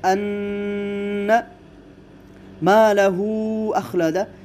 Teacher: ان مالہ اخلدہ، یہاں پر جو مد ہے یہ مد جائز منفصل ہے، اس کو آپ 5 حرکات کی مقدار بھی لمبا کر کے پڑھ سکتے ہیں، جسے توسط کہا جاتا ہے۔